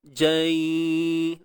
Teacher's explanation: Sebut jim dulu. Jai. Kemudian dalam tempoh kadar dua harakat tu barulah wujudkan unsur dengung.